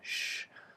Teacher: we start off with a sh, which is unvoiced. You use a blade of the tongue.